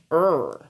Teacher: Encore une fois, on a le R dans la bouche, pas dans la gorge.